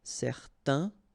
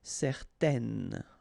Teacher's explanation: Okay, so in that case, certain, it's quite interesting because you've got this A-I-N together, and then they will produce this un sound. Okay, so it's nasal in your nose, un. Okay, if you add this at the end, then it will change the thing, and then you will pronounce it n.